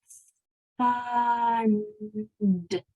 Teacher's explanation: it starts with your tongue between your teeth with a voiceless sound · my tongue is between my teeth and I'm blowing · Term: th voiceless sound